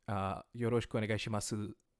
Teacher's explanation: you're from the region of Japan called Kansai, in which case you could say yoroshiku onegai shimasu and really pronounce the u